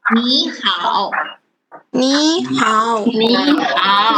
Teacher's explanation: Okay, because this is too difficult to pronounce. You have to change the first word 你 into second tone when you read.